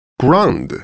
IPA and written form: grɑ:nd (Grande)